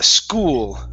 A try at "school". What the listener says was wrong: give me an l there at the end instead of school it's school school school there you go that's the l sound